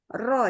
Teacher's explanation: Jadi area sini, area ujung depan lidah juga ke arah langit-langitnya. Terus bergetar dia. Ada sifat namanya takrirnya.